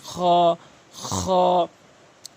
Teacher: হলকের শেষ থেকে উচ্চারণ করবেন